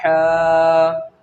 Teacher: بڑا حا حلق کے بیچ کے حصے سے ادا ہوتا ہے